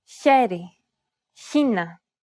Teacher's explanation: it sounds a little bit like the H in the word hue, but with turbulence.